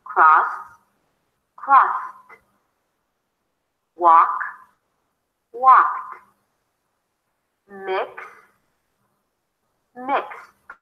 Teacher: If it's a voiceless consonant, then it loses its voicing quality and it turns into a T. So the D turns into a T if it appears after a voiceless consonant.